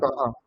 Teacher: চ মূর্ধস্য স, মানে জিহ্বার কিছুটা অংশ মূর্ধাতে স্পর্শ করবে। চ স উচ্চারণ হ, মূর্ধা থেকে হবে।